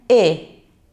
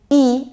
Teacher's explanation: voy a seguir a la E, que es bastante parecida, solo que en vez de estar tan alta la lengua, baja un poquito